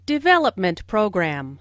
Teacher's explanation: Since these two words make a compound noun, the main stress falls on development.